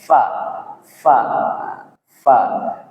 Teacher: Huruf fa itu keluarnya di 2 bibir bagian dalam yang basah.